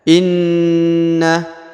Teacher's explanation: huruf na ditekan Ya ditahan dua harakat ditekan ditahan dua harakat lalu didengungkan